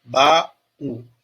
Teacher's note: Meus lábios eles se fecham na pronúncia do U de céu, céu. Já em baú, o U ele é pronunciado, ele ganha força.